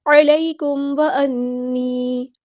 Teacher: میم ساکن پر یہاں پہ کون سا رول اپلائی ہو رہا ہے؟ اظہار شفوی، ہم نے یہاں پہ ٹائم نہیں دینا۔